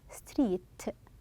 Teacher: Like when we say street, Notice when you say t, street, you are stopping the air with the t sound